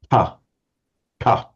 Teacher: It's unvoiced and it's aspirated ta.